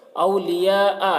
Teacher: اولیاء، یہاں پر مد متصل ہے، حرف مد کے بعد حمزہ اسی کلمہ میں ہے۔ مد متصل کو 3-4 الف کے برابر کھینچ کر پڑھیں گے